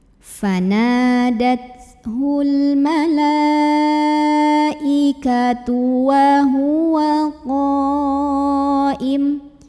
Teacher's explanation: Maka lamnya dipanjangkan boleh 4 boleh 5 harokat. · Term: mad wajib muttasil